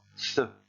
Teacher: comme le TH en anglais, c'est-à-dire avec la langue coincée entre les dents